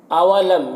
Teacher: میم میں یہاں پر اظہار شفوی ہوگا، جلد پڑھنا ہے